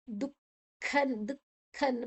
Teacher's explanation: ದುಃಖ ದು ಆಯ್ನೆಡ್ ಬೊಕ್ಕ ಅಲ್ಪ ವಿಸರ್ಗಲ ಉಂಡು. ಐತ ಉಚ್ಚಾರಣೆ ಕ್.